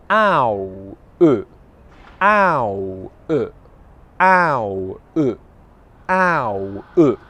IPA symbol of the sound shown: aʊ